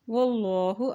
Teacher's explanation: अल्लाह के नाम से पहले ज़बर है तो अल्लाह का नाम ये मोटा अदा किया जाएगा